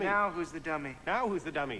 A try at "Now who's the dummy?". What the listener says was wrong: You want to use the back of your mouth. Your mouth is moving. If your mouth is moving, the effect is ruined. Try to keep your lips immobile.